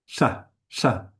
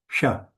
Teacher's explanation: It's the cerebral or retroflex sa, which is sha, sha, not sha, not sa, but sha.